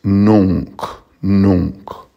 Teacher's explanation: the N before a C would be pronounced like an NG. So it's not nunc, it's nunc, nunc.